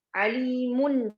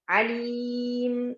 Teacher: Alimun ada ketika wasal, tapi ketika waqaf hilang. Itulah menunjukkan tidak asliyah, dia tidak sabitah. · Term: tanwin